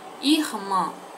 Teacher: A sílaba tônica é o mã. Ela é uma palavra oxítona.